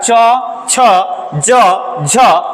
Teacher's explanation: संघर्ष करता हुआ घर्षण करता हुआ हवा बाहर मुख से निकलता है इसीलिए इसे स्पर्श संघर्षी व्यंजन कहा जाता है तो चार गो